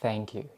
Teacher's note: you have to bring your tongue between your teeth to make that sound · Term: th sound